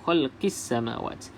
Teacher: maka kita tak perlu sebut lam tersebut dalam bacaan Terus masuk dalam huruf yang bersabdu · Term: alif lam syamsiah